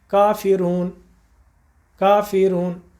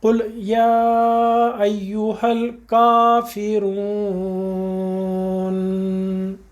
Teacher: نون کے مخرج میں اپنی زبان کو ٹچ کر دیجئے، وہاں سے پورا نون ادا ہوگا بغیر زیر زبر اور پیش کے